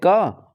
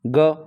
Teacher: तो अघोष है क और ये है सघोष ग